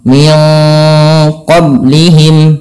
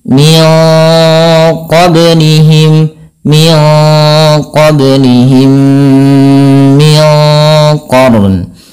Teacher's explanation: di sini ada bacaan ba yang dia harus dipantulkan di dalam melafalkannya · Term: qalqalah